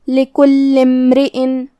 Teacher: کلمت امرئن میں یہاں شروعات میں حمزہ ہے، یہ حمزۃ وصل ہے تو ہمیں حمزہ کو ظاہر نہیں کرنا ہے، لام کے بعد سیدھا حرف المیم پڑھیں گے